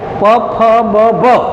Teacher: બે હોઠ ભેગા થાય અને હવા અવરોધાય. જ્યારે ફેફસામાંથી હવા બહાર આવે, સ્વરપેટીમાં જાય, નાદતંત્રીઓની ધ્રુજારી થાય અને ધ્વનિ ઉત્પન્ન થાય અને એ હવા હોઠ આગળ અવરોધાય. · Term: ઓષ્ઠ્ય વ્યંજન